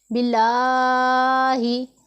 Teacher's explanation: लफ्ज़ अल्लाह के लाम से पहले ज़ेर है तो इसमें हमने तरकीक करनी है, मसलन इसे हमने बारीक पढ़ना है, बिल्लाही।